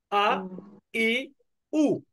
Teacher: এই হামজাটা একটু হালকা ধাক্কার মতো উচ্চারিত হবে